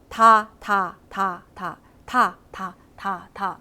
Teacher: 위의 앞니 바로 뒤를 칠 거예요 여기 이 부분을 칠 거야 혀끝이 그래서 이거를 뭐라고 하냐면 잇몸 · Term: 잇몸 소리